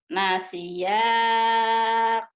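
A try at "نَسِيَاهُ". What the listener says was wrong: Bukan ku, hu. Hu.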